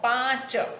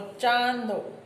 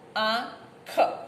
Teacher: જ્યારે પૂર્વ વ્યંજન અનુનાસિક હોય ત્યારે સંયોગ લોપ થતા પાછળનો નિરનુનાસિક વ્યંજન રહે છે અને દીર્ઘ થયેલો સ્વર સાનુનાસિક બને છે.